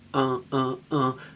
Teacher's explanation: there's no N on un petit fantôme